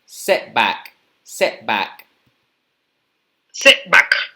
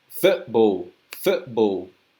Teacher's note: A veces reemplazamos la T o la D o la P y ponemos compresión de aire. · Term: glottal stop